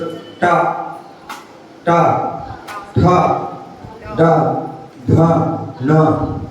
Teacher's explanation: जीभ कहाँ लग रही है, मूर्ध में लग रही ना, तो इसलिए क्या है, मूर्धोच्चारित